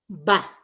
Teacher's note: El sonido bilabial oclusivo sonoro, ba. ¿No?